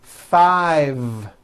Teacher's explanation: I said five with a voiced V